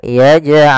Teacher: Jim ada bacaan Qalqalah yaitu huruf jimnya memantul maka dipantulkan huruf jimnya